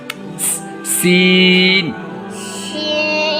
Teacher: یہ سیٹی کی آواز آنی چاہیے اس میں۔